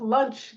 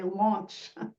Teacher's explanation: that's a rotation of vowels so that people say, instead of lunch, they say launch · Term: Northern Cities dialect